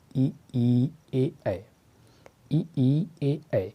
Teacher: जिन स्वरों के उच्चारण में जीभ का अग्र भाग काम करता है उन्हें हम अग्र स्वर कहते हैं। जैसे हम बोलेंगे ई, ए, ऐ, ई, ए, तो इसमें हमारी जिह्वा का अग्र भाग सक्रिय है, जो कि इस ध्वनि को निकालने में अहम भूमिका निभा रहा है।